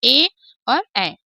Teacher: कंठ और तालु दोनों के सहयोग से दोनों के संयुक्त सहयोग से जब हमारे अक्षरों का उच्चारण होता है तो ये कंठ तालव्य कहलाते हैं